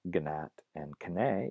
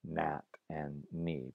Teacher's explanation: In words like that began with a gna or a kna, words like gnat and kne in Middle English become nat and ni by just dropping the K or G sound and having the word start with a nasal